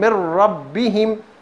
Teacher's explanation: மின் ரப்பிஹிம்னு இன்னுடைய சவுண்ட் வராது, இணைக்கிறோம் பின்னால் உள்ள எழுத்தோடு · அந்த நூன் சாக்கினை அதுக்கு அடுத்துள்ள அந்த இதுகாம் பிலா குன்னாவுடைய எழுத்தோடு இணைத்து நாங்கள் ராகம் இல்லாமல் உன்னா செய்யாமல் ஓதுவோம்